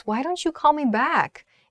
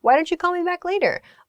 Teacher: So make sure you use a suggestion intonation. Why don't you blah blah blah? Upward intonation.